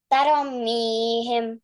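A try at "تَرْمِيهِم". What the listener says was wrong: There is no zabar on raw. It's not taro. You said taromihim. So there is no zabar on.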